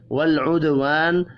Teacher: لام ساکن پر قلقلہ نہیں کرنا، دال ساکن پر قلقلہ کریں گے. الف مدہ کو ایک الف کے برابر کھینچ کر پڑھنا ہے.